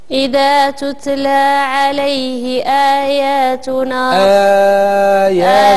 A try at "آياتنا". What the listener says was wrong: المد الأول ماشي هو الثاني. المد الأول عنده أربعة ديال الحركات.